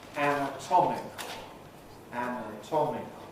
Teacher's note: In the case of anatomical, we stress the syllable before the ik, the regular rule. So tom is the main stress.